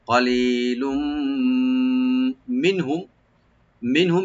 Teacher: কলিলুম মিনহুম, মিনহুম মিম সাকিন পর যে নুন, মিমের পর যে নুন সাকিন আছে এখানে আমরা জাহার করব, আর মিম সাকিন লাস্টে এটা এখানে জাহার হবে। নুন সাকিন আর মিম দুইটাতে জাহার হবে, মানে কোনো গুণা হবে না